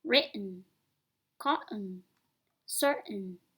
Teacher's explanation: When the t is used before an unstressed syllable with the n sound, it's pronounced without a puff of air and with a quick stop made in your throat. This positional variation is called glottal T.